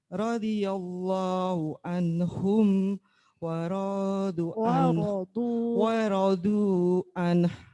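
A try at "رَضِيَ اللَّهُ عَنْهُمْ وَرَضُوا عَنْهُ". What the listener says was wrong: Jadi ditekan dulu annya ya, baru dikasih h. An. Jadi annya itu nonnya dibaca dulu.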